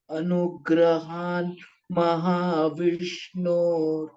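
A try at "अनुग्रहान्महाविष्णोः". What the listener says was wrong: Vishnoho. Visarga. Vishnoho. Visarga I'm saying. Anugrahan mahavishnoho.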